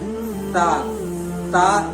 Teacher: जबान का नोक बाहर दिखना चाहिए तब जाकर सा अदा होगा